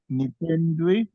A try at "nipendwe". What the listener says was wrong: Nipendwe, not ndwi. Nipendwe, not ndwi. Pendwe.